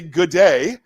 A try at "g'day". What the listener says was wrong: Yeah, no, it's really smash them together. It's g'day.